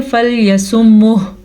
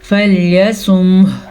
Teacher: मीम भी साकिन है और हा को भी साकिन करना है इस वक्फ की वजह से